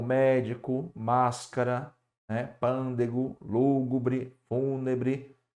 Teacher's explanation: Quando a antepenúltima sílaba é acentuada, nós temos proparoxítona.